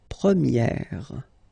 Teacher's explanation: And then for the feminine form, you will get première. Okay, so it's open, this eh sound